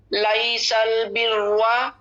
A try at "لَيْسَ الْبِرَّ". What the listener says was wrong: اچھا لام کو موٹا نہیں کریں گے, لام باریک رکھیں گے. لیس البر, را کو موٹا کریں گے.